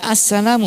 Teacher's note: Al-Salamu, dibaca as-salamu, berarti ada lam yang tidak terbaca, namanya idgham syamsiyah